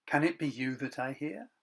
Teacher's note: The pattern of one strong syllable followed by 2 weak ones is called a dactyl.